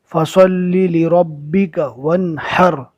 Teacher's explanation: یہ رو کو پور پڑھیں گے، اس لیے کہ جزم والی رو سے پہلے زبر آ گیا